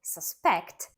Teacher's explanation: a verb suspect stressed on the second syllable · suspect, stressed on the second syllable, means to believe something is true or to think someone is guilty.